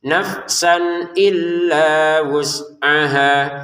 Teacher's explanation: Nafsan illa ini dibaca dengan jelas enggak ada dengungan. Jangan nafsan illa itu dengung.